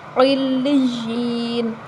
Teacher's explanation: نون کے اوپر جو زبر ہے وہ وقف کی صورت میں ختم ہو جائے گی، علیجین، نون ساکن ہو جائے گی وقف کی صورت میں، ٹھیک ہے۔